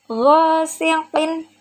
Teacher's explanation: go itu ada alif sebelumnya fathah, maka hukum bacaannya adalah mad tabi'i, panjangnya 2 harokat. Ghasiqin, setelah tanwin ada hamzah, maka hukum bacaannya adalah idhar.